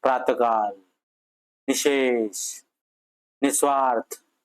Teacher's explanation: श्वास सोडणे असा होतो ना प्रातकाल निशेष निस्वार्थ नाही म्हणजेच काय विसर्गाचा उच्चार होत असताना स्वराच्या उच्चारानंतर ह सारखा उच्चार होताना दिसतो